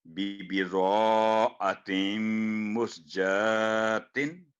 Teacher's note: آتیم میم مشدد 2 second گننا